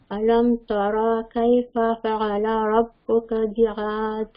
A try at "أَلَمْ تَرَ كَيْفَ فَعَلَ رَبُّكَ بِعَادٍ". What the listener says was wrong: علم ترانی, علم ترا موٹا کرنا ہے, لمبا نہیں کرنا. علم ترا کیف,